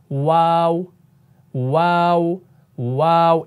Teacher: इसमें होठ आपके गोल हो रहे हैं · वाव गैर मद्दा जो है ना होठों के दरमियान से अदा होते हैं यानी जब आप ऐसे करेंगे वाव वाव वाव इसमें होठ आपके